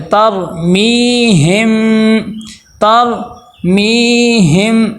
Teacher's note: آگے دیکھیں ترمیہم، اب یہاں پہ دیکھیں وہی را کے اوپر جزم ہے لیکن پیچھے زبر آ گئی ہے، تو ہم یہاں پہ کیا کریں گے، اس را کو موٹا کر کے پر کر کے پڑھیں گے